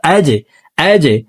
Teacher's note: জিম কলকলার হরফ নিচের দিকে ধাবিত করে ধাক্কা দিয়ে উচ্চারণ করতে হবে